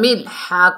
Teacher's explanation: حلق کے درمیان سے ادا کریں گے